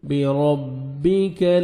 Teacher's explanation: را کو مرزبر ہے، را کو موٹا کر کے پڑھیں گے